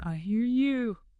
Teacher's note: Another quick one, "I hear you" often sounds like "I hear you," sort of blurring the R and Y sounds together